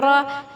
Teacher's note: را پہ زبر ہے، فتح ہے تو موٹا پڑھیں گے